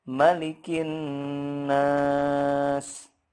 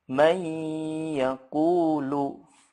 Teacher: gunnah pada akmal ini harus dibaca panjang atau ditahan dengungnya itu sepanjang atau seukuran 2 sampai 3 harokat. Ya, kita sudah ada gunnahnya, tapi kalau tidak ditahan itu salah. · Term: gunnah akmal